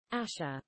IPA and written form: ˈæʃə (Asher)